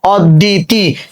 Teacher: উচ্চারণের সময় কখনোই দীর্ঘইকার হয় না, উচ্চারণ কি হয়ে যায় রস্বইকার হয়ে যায় অদ্বিতি। শেষে কি আছে?